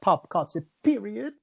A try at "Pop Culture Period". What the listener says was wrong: It was just the inflections.